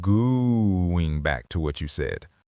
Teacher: You drag out the very first word, going back to what you said. When you elongate that O sound in going, it acts as a calming anchor for the whole table.